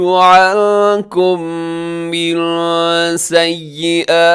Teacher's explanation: عَنكُم کے آخر میں میم ساکن کے بعد میم غنّے کے ساتھ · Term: میم کا ادغام